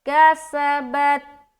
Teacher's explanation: ता में कलकला नहीं होना चाहिए।